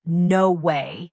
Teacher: With a rising intonation, you'll instantly grasp their surprise or disbelief.